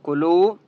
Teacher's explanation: کلو، واو مدہ ہے، لام کو ایک الف کی مقدار کھینچ کر پڑھیں گے